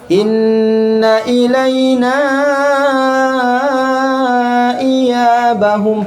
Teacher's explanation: Ilaina, kenapa panjang? Karena bertemu dengan hamzah, disebut dengan mad jaiz munfasil.